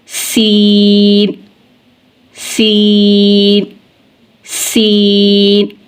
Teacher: इन तीनों का मखरज है, नोक के ज़ुबान जब सनाया उलिया और सुफला दोनों किनारों के बीच में आएगी तो ज़ा, सीन और सौद अदा होंगे, और इन तीनों को हरूफ़े सफ़ीरिया कहते हैं, इसलिए कि जब हम इन हरूफ को अदा करते हैं तो इनकी आवाज़ सीटी की मिसल निकलती है, इसलिए इनको हरूफ़े सफ़ीरिया कहा जाता है।